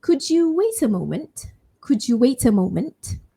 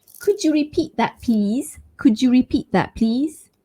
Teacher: When I said could you, what I did was to assimilate the sounds D and Y sound. So could you instead of could you.